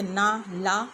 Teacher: इनके उच्चारण में जीभ दांतों के अंदर के मसूड़ों को छूती है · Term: वर्ष